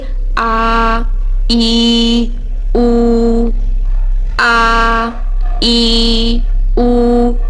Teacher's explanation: حمزہ کو پھر ہم مد کی حالت میں جب پڑھیں گے تو 2 کاؤنٹس لمبا کر کے پڑھیں گے